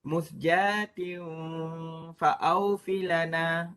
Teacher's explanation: kemudian kita buat dalam makhraj fa, di mana gigi bertemu dengan bibir mulut